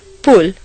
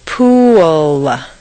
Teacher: Where did that W come from? It's certainly not written down anywhere, but it is there just as definitely as the P is there.